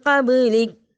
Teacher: قابلک میں ہم نے با کے اوپر قلقلہ کیا اور رک گئے